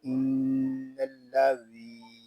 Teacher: ذال کو ہم نرمی کے ساتھ پڑھیں گے، اس میں سختی نہیں کریں گے، اس میں سیدھی بھی آواز نہیں آنی چاہیے۔ ذال کو ہم ایک الف تک کھینچ کر پڑھیں گے کیونکہ یہاں یا مدہ ہو رہا ہے